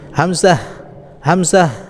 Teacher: হামজাহ কণ্ঠনালীর নিম্ন ভাগ হতে এটাও উচ্চারণ হবে